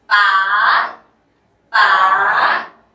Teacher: We call rising tone. Two step down and up.